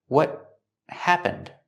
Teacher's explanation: The T at the end of what is a stop T, and it links to the next word.